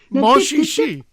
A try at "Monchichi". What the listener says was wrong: The C's are cha. He's doing the French pronunciation. No, his was French. Yeah, you said shishi.